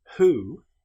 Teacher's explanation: However, with the word who, this is pronounced as if the W didn't exist. It's pronounced like it was just starting with the sound H.